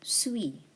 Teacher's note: The S at the end is silent.